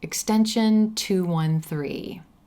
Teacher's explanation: when you share your extension the emphasis again is going to fall on that final number and not the word extension